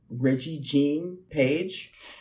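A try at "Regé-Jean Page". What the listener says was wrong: It's Reggae. Jean. Because it's French. sense if you read it with a French accent. If you read it with an English accent, it's Reggie Jean Page, which is not as sexy.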